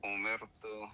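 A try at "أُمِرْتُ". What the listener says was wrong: مر نہیں، مر، بالکل باریک،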